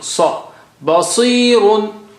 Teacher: Sa is very thick and high sounding.